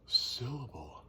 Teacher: You emphasize that first syllable. So that's the strong beat of that word, I guess you could say.